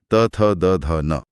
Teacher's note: इसमें जीभ बिल्कुल बाहर की तरफ आकर ऊपरी दांतों के पिछले हिस्से को छूती है। हां, बिना दांतों को छुए त या थ बोलना शारीरिक रूप से तो असंभव ही है। · खैर, मूर्धा के बाद बारी आती है दंत्य ध्वनियों की, त थ द ध न। इसमें जीभ बिल्कुल बाहर की तरफ आकर ऊपरी दांतों के पिछले हिस्से को छूती है।